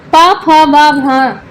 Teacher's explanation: प, फ, ब, भ ये पांच व्यंजन ओष्ठ से बोले जाते हैं। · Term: ओष्ठ वर्ण